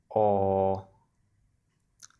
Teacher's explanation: round low back vowel